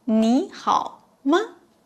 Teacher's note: The pitch of ma adapts to the tone of the word that precedes it, ensuring smooth and natural speech flow. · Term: neutral tone